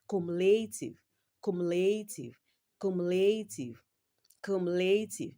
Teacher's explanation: In the word cumulative, the third syllable is stressed. So, you will capitalize L and A.